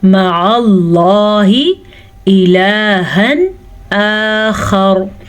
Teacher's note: लफ्ज़ अल्लाह को पुर पढ़ेंगे क्योंकि लफ्ज़ अल्लाह से पहले ज़बर है